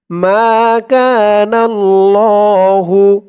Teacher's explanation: মা এক আলিফ টান, জবরের পরে খালি আলিফ। জবরের পরে খালি আলিফ যত আসবে প্রত্যেকটার ভিতরেই এক আলিফ করে টান দিয়ে পড়তে হবে।